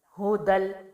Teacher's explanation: 2 زبر کی تنوین کو ہم نے لام سے ملانا ہے